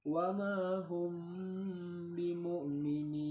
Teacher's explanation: apabila terdapat huruf mim mati bertemu dengan huruf ba, praktek bacaannya disertai tempo dengung atau gunnah 2 harakat. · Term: ikhfa syafawi